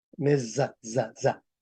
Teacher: en español medieval, cuando solamente hay una S, se pronuncia z.